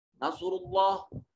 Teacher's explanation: نصر اللہ اس میں جلالت کا ماقبل مضموم ہے، اس میں جلالت کو موٹا اور پر کر کے پڑھا جائے گا